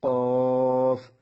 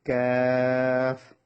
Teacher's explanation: জিহ্বার গোড়া হতে একটু আগে বাড়িয়ে তার বরাবর উপরে তালুর সঙ্গে লাগিয়ে ক্যাফ। এটা হচ্ছে কফ, এটা ক্যাফ, ব্যবধান বোঝা যেতে হবে, কফ, ক্যাফ।